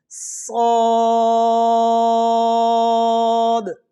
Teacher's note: صاد سیٹی کے ساتھ ادا کریں گے اور موٹائی کا بھی خیال کریں گے